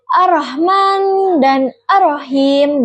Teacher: Huruf H kecil yang makhrajnya itu ditenggorokan tengah getaran lebih lemah dari H besar